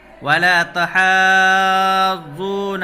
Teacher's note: حروف مدہ کے بعد جزم یا تشدید، یعنی تشدید ہے یہاں پر، تو اس کو کھینچ کر کے پڑھیں گے